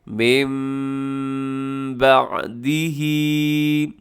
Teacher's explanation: نون ساکن کے بعد با آتا ہے، تو نون ساکن کو ہم میم کی طرف چینج کر دیتے ہیں، تو یہاں نون نہیں پڑھا جائے گا بلکہ چھوٹا سا میم لکھا ہوا بھی ہے، تو یہ میم پڑھا جائے گا۔ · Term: اقلاب